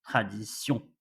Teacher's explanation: we don't pronounce N when we are reading la tradition. We're only pronouncing the sound of on